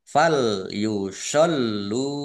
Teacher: Fal yusollu ini lamnya dibaca dobel ada tasdidnya